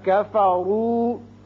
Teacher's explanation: کفروا میں را کے اوپر پیش ہے، اس کو پر پڑھیں گے